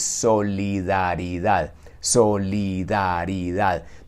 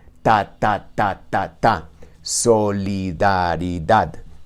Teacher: palabra larga y complicada de conocer en español es solidaridad solidaridad donde esas cinco sílabas suenan en las mismas dimensiones de las mismas formas y es un sonido básicamente un poco monótono